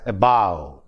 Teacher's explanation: In the same way, in a word like above, above, the first syllable is a, which is not stressed. Bow is stressed, and so the word is pronounced as above.